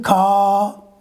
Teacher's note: when the ra comes at the end we generally don't pronounce